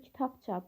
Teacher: B samiti P samitinə çevrilir. Tələffüz zaman səs düşümü olur.